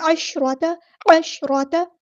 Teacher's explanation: شین ساکن کو ہلانا نہیں ہے، را ہمارا ہیوی لیٹر ہے ، تا کی زبر کو لمبا نہیں کرنا، عشرۃ نہیں پڑھنا،